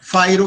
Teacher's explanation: Então, a acentuação fica no fai.